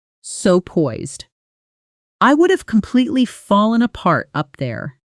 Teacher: Poised gets a strong, slightly stretched vowel sound